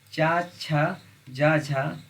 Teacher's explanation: चा छा जा झा या का उच्चारण स्थान होता है, तो इनका उच्चारण स्थान तालु से होता है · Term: तालव्य